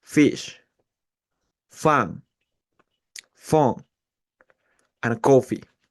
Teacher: The sound F is a voiceless fricative sound. We produce it by putting the upper teeth on the lower lip and pushing it out.